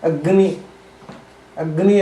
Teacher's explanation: ಈಗ ಅಗ್ನಿ ಅನ್ನುವಲ್ಲಿ ಒಂದು ಗ್ ಮೂಗಿನಲ್ಲಿ ಮತ್ತೊಂದು ಗ ಕಂಠದಿಂದ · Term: ಅನುನಾಸಿಕವಾಗಿ